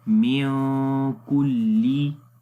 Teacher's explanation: میاں کلی، میاں کے اوپر نون کی آواز کو ناک کے اندر چھپائیں گے، اخفا کریں گے، اخفا کے اندر آواز چھپاتے ہیں، نون کی آواز کو ناک کے اندر چھپا دیتے ہیں